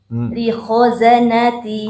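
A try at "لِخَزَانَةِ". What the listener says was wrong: Koknya kurang tebal.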